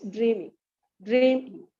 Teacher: in is a weak syllable and dream gets the strong syllable okay dream is the accented one and ing in is the